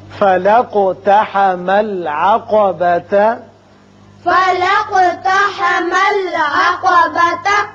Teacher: یہاں قوف کی صفت قلقلہ ادا کریں گے